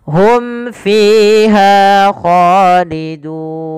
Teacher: Jelaskan suara mimnya pada lafal Hum fiha karena ia izhar syafawi